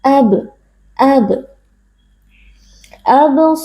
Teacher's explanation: yang sukun kemudian huruf ba sukun ini terdapat di tengah-tengah Kata Kita membacanya dengan memantulkan suara dari makhraj huruf ba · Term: Qalqalah Sura